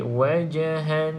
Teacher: Jim salah satu daripada 5 huruf qalqalah, maka perlu ada lantunan. Lantunkan sedikit saja, sebab dekat sini kita panggil dia qalqalah sughra.